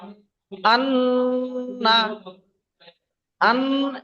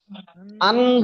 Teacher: গুণনা করছি নাকের মধ্যে ধরে রাখছি